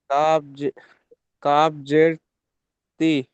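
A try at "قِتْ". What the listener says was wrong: কাপ জের নয়, কাপ তো তার সঙ্গে ধরে নিতে হবে, কারণ যে অক্ষরে সাকিন থাকে সেটা ধরে নিতে হবে। যেমন বা আর সিন ধরেছেন, এরকম কাফ আর তা ধরতে হবে, কাফ তাজের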